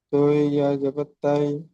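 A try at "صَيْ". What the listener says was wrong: ত নয়, সদ আছে। সদ, ইয়া জেবার সই। জদ নয়, জই।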